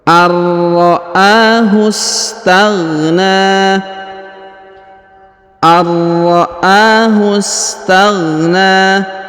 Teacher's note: huruf hu langsung disambung masuk ke huruf sa berharokat sukun. Sedangkan alifnya tidak dibaca karena ini adalah penyambung atau penghubung antara kata ra'ahu dengan astaghna, ya.